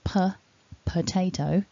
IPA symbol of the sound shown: ə